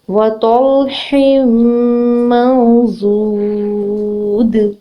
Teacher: نون ساکن کے بعد ورڈ ہے غاد, جو کہ ایک ہیوی لیٹر ہے, ٹھیک ہے, اور ہم نے اس کو دو حرکت لمبا کرنا ہے کیونکہ اس کے آگے واو ساکن ہے, ٹھیک ہے. وقف کی صورت میں ہم یہاں پہ دال پہ جھٹکا دیں گے, قلقلہ کریں گے کیونکہ دال حروف قلقلہ میں سے ہے